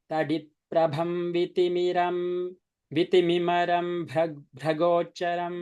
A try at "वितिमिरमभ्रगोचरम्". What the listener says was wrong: Why maram? Vitimiram abhra.